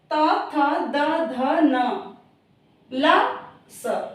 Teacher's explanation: जो दांतों से, जीभ और दांत के स्पर्श से बोले जाते हैं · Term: दंत्य व्यंजन